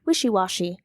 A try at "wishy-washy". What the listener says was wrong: warsh? I think you said warsh. You said it like warsh, though.